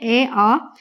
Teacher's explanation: जब आप कंठ से बोलते हो तो ए आ ये सब कंठ से आ रहे हैं आपके।